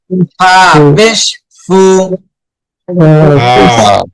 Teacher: সামনে উপরের দুই দাঁতের সাথে লাগবে নিচে ঠোঁট